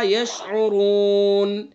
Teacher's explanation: اب یہ دوسرا یشعرون دیکھیے، اس کے اوپر جب ہم وقف کریں گے تو یہ نون ساکن ہو جائے گا۔ اصل نون کے اوپر حرکت ہے، زبر ہے، لیکن وقف کی وجہ سے اس حرکت کو ہم نے سکون سے بدل دیا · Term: سکون عارضی